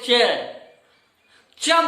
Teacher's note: जैसे हम बोले च बोलते हैं, हमारे च, हमारी जीभ जो है वह ताल में छूती है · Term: तालव्य